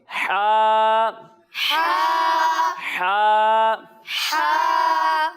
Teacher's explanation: और जब हम हा की अदायगी करेंगे तो इसे हम हलक के दरमियाने हिस्से से पढ़ेंगे